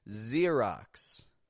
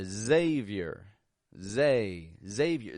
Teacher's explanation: X will sound like a Z, when it is starting a word.